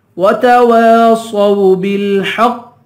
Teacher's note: واؤ پہ ہوٹ گول ہوگا، دوسرے واؤ کو ایک الف کے برابر کھینچ کے پڑھیں گے